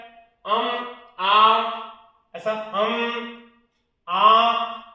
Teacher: उसके बाद अनुनासिक, अभी मैंने बताया, आ, ऐसा आ, ये क्या है, अनुनासिक है, अनुनासिक मतलब किससे, मुंह और नाक दोनों से